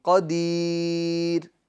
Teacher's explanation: قدیرونی الذی, تو را کو پور پڑھیں گے. مگر جب قدیر پر وقف کریں گے تو را کیا ہوگی, باریک ہوگی. کیا ہوگی, باریک, کیونکہ را ساکن سے پہلے کیا ہے, یائے ساکنہ ہے.